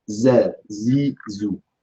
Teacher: the zay has istifal but does not have hams like the sin and the sad, and has jahr instead